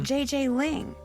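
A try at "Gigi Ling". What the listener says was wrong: you pronounce g like j and j like g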